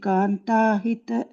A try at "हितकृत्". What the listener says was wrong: No, you're saying krita, it is krit. Hita krit.